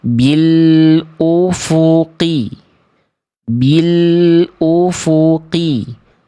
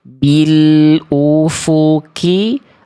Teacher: Jadi qaf lebih dalam, kaf lebih luar.